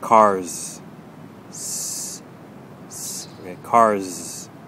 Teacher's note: with cars you can hear that kind of z sound at the end which means that our tongue is not quite touching the top of the mouth okay so you're gonna you can feel air blowing through just